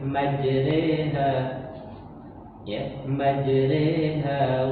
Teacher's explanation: dibaca dengan ro yang dibaca tarkik, ya, dibaca tarkik tipis. Kemudian dibaca dengan imalah, dibaca dengan miring. · Kemudian dibaca dengan imalah, dibaca dengan miring. Jadi bukannya bukannya bersuara fathah yang umum, tapi dia dibaca dengan miring, imalah.